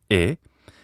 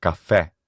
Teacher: The next line down is called open mid. An open mid front unrounded vowel is e.